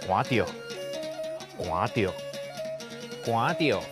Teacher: 寒第5调读本调无变调，着第8调读轻声着